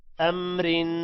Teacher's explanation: اب یہاں پر را کو باریک پڑھیں گے 2 زیر کی وجہ سے،